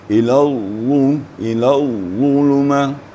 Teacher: lidahnya merapat lebih banyak merapatkan langit-langit ke atas mulai dari pangkal lidah jadi akan terdengar suaranya agak agak tebal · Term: Huruf itba